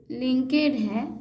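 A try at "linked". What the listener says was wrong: लिंक्ड, लिंक्ड। ध्यान देती नहीं है लेटर्स को, लेटर्स पे ध्यान दीजिए। लिंकेज में होगा LINKAGE, लिंकेज। यहाँ तो के के बाद ED है, लिंक्ड।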